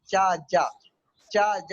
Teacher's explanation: चा, जा बोलेंगे तो आपको लगेगा जबान तालू से यानी पैलेटल से टकरा रही है, तो ये पैलेटल साउंड है